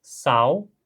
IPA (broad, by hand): saw